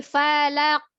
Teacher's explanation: Bentuk mulutnya tetap diam ketika dia punya pantulan ko-nya itu. Hanya pantulan saja, tidak berubah.